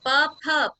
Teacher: प और फ को बोलने में होठ जुड़ते हैं तो प फ का उच्चारण ओष्ठ से होता है